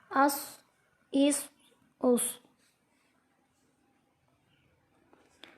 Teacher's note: صاد حروف مستعلیہ میں سے ہے، اس کو موٹا کر کے پڑھیں گے